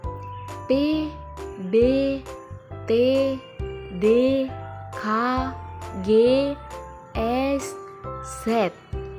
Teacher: jenis fonem yang melibatkan hambatan atau penyempitan aliran udara dalam saluran vokal saat diucapkan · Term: konsonan